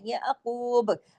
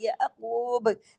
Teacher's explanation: اگر ہم با پہ رکتے ہیں اور با کی حرکت کو روکتے ہیں تو با پہ بھی کلکلہ ہوگا، یہ عقوب، کیونکہ ہم نے یہاں پہ عارضی سکون کیا ہے۔